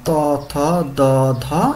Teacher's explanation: দাঁতের ওইখানে বাধা পেয়ে যেগুলো উচ্চারিত হবে উপরের পাটির দাঁতে লেগে দাঁতে লেগে বায়ুপথে বাধা সৃষ্টি করে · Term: দন্ত ব্যঞ্জন